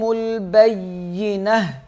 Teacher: یہ تا جو ہے وہ ہا میں تبدیل ہو جائے گا جب وقف کریں گے